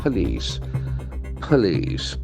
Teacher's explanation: Police, and the accent falls on the second syllable.